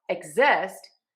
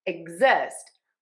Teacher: for exist, we are going to change the syllable stress. We are going to stress syllable number two. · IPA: /ɪgˈzɪst/